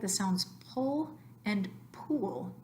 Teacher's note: some people make the sounds pull and pool sound alike